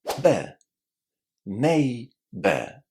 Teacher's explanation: This last syllable is really, really short.